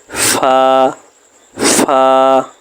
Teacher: আগার সঙ্গে লাগাইয়া র দাল ফা লাল ফা 14 নাম্বার মাখরাজ নিচের ঠোঁটের পেট সামনের উপরের দুই দাঁতের আগার সঙ্গে লাগাইয়া